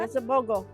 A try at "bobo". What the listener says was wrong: Not bogo, bobo. bobo.